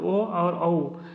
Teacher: ओ और औ ये दोनों कंठ और ओष्ठ से प्रोड्यूस होंगे। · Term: कंठ ओष्ठ